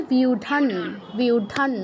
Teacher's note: অনুস্বারের জায়গায় নয়ের মতো উচ্চারণ হবে। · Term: অনুনাসিক ধ্বনি